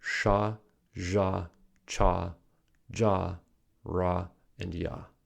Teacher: consonants that are produced by the body of the tongue approaching or touching the hard palate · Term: palatal consonants